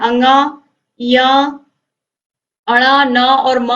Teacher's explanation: इन्हें हम नासिका व्यंजन भी कहते हैं क्योंकि इनका उच्चारण स्थान जब हम इनको बोलते हैं तो नाक से भी उच्चारण होता है तो इनका उच्चारण स्थान नासिका भी होता है।